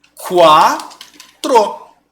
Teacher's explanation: Poxa, eu bati o olho, eu vi que o U é uma semivogal e o A é vogal, eu sei que ele está saindo de uma semivogal, que é um som fraco, e indo para o som de uma vogal, que é forte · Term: ditongo crescente